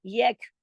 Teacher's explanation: ये नोटिस करें कि यह काफ को हमने काफी जमाव के साथ पढ़ा है, क्यों, इसलिए कि कुतुब जद का हर्फ नहीं है ये।